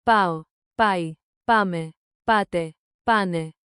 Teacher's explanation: Keep the accent on the first syllable.